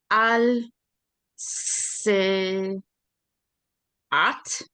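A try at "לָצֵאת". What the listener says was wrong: Latse. The aleph here has the aleph has no vowel, so it makes no sound. Latset.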